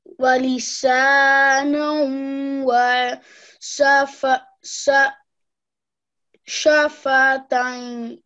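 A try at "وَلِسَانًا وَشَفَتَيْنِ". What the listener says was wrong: Very good. Okay, continue, please.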